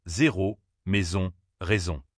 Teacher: Ta gorge vibre quand tu le dis. Mets ta main sur ta gorge et tu sentiras une petite vibration. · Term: sonore